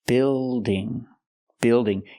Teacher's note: the word is not pronounced beaing it's pronounced Bild building building use the short I sound like this is plus the dark L